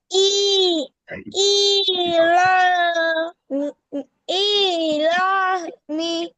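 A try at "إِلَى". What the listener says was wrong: ইতে টান কেন? লাতে টান হবে, খাড়া জবর আছে।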